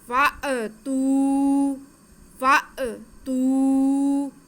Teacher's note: فأتوا، اگر جھٹکا نہیں دیں گے تو وہ الف بن جائے گا، تو یہ الف تو ہے نہیں، یہ ہے حمزہ، تو ہم نے جھٹکا ضرور لگانا. آگے تا پہ پیش واو ساکن، تو یہ واو مدہ ہے، تو تا کی آواز کو ہم کھینچیں گے